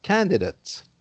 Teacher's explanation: Now, if it's a noun, for example, a candidate, then once again, the ate is not pronounced ate like in the verb, but it's pronounced ut like in the adjective